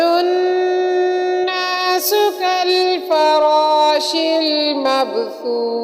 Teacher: مبثوث میں با ساکن ہے، با حروف قلقلہ میں سے ہے، ساکن حروف ہے، تو مب ہلا کر پڑھیں گے · نون مشدد ہونے کی وجہ سے ہم نون پر غنہ کریں گے